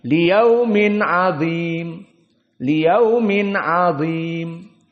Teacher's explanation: Diberikan dha haknya namun tidak ada tafkhim dan semuanya tarqiq.